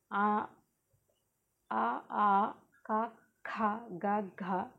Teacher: కంఠం నుండి పుట్టే అక్షరాలు ఆ అక ఖ గ ఘ ఇవి హ అః అనేవి కంఠ్యాలు